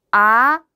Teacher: 이성은 중간음에서 시작해서 끝음을 올려주는 게 포인트입니다. 그래서 표기도 올라가는 방향으로 이렇게 표기를 해주시는데 중간음에서 시작해서 올라가는 방향 아, 끝음 올라가죠, 여러분.